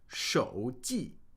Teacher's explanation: 手 记, third tone, fourth tone.